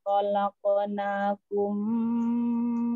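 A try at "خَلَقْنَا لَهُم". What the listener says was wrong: Khalaqnahum. La-nya tadi tidak terbaca. Khalaqnalahum.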